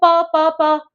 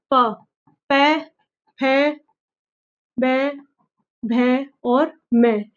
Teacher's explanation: जिनका उच्चारण होठों से होता है। ओष्ठय कहलाता है।